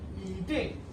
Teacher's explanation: When E, this is the same E, is followed by a syllable in the fourth tone, it changes into the second tone. So when this E, this word E, is followed by a syllable in the fourth tone, that is Ma, foreign tone, it changes into the second tone.